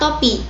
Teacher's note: Bunyi T merupakan bunyi apikodental pada kata topi.